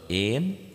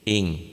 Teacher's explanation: ini nun matinya ketemu kaf, n-nya jadi eng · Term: ikhfa